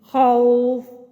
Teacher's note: خوف میں واو ساکن سے پہلے فتحہ، تو ہم آرام سے نرمی سے موڑ کر ان پہ مد کر سکتے ہیں، خوف۔ آگے قریش، یا ساکن سے پہلے فتحہ۔ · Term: واو لین